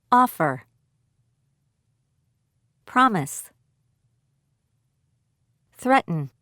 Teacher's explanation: Stress on first syllable